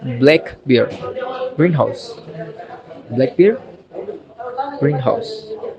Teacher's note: Words with two parts. The rules for compound nouns. The stress is on the first part.